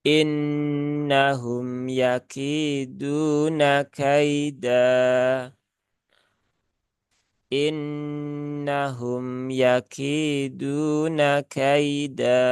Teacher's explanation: waakaf pada fathah tanwin itu adalah hukum bacaannya mad iwad Ya maka dibaca panjang dua harakat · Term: mat iwad